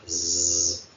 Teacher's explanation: Z es la dental fricativa sonora